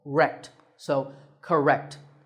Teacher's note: there are again two syllables ka and rect but in this word we stress the second syllable